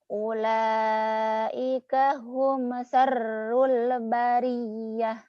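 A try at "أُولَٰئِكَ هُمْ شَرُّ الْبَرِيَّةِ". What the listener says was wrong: Hutang shinnya malam ini shinnya harus disuntas. Shinnya ya yang harus kuat.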